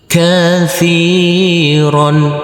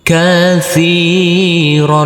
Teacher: huruf taa yang berkasrah ini kita baca panjang dengan panjang dua harakat